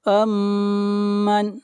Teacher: میم کے اوپر شد ہے، غنہ ہوگا